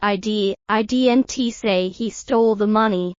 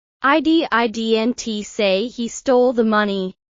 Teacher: For example, in the sentence, I didn't say he stole the money. If you stress didn't, you're emphasizing that you didn't say it.